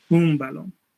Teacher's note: este sonido ya no simplemente es un sonido oral, sino es nasal a la vez, oronasal, que sí que para decir la vocal se va aar por ambas cavidades, oral y nasal, ¿no? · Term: nasalización vocálica